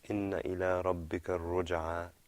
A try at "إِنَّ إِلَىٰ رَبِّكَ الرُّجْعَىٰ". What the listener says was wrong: إن. Elongate that noon a little bit.